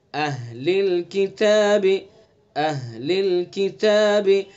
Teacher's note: حمزہ کو بھی سینے سے نکالنا ہے اقصائے حلق سے، اور ہاں کو بھی